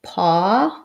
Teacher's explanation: paw has the rounded semi-rounded ah